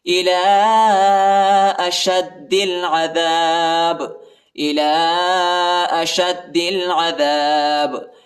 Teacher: شین کو دال کے ساتھ ملائیں گے، دال کو لام کے ساتھ ملائیں گے، دال کو سختی کے ساتھ شدت کے ساتھ پڑھیں گے · آخر با پر جو ہے قلقلہ کریں گے، جھٹکا دیں گے، جھٹکے کے ساتھ با کو پڑھیں گے کیونکہ یہ حروف قلقلہ کا حرف ہے۔ إِلَىٰ أَشَدِّ الْعَذَابِ، إِلَىٰ